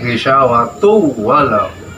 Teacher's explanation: Dalam ilmu tajwid dinamakan idgham bi guna. Asalnya ghisawatun dengan walahum. Karena tanwin bertemu dengan waw, maka dibacanya ghisawatu walahum.